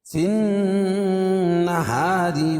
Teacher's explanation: اور وصل کی صورت میں را باریک پڑھی جائے گی، کیوں؟ را کے نیچے زیر ہے۔